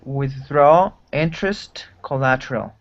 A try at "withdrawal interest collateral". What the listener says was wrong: good pronunciation